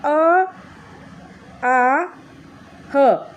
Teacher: कंठ में आपके अ आ ह ये आते हैं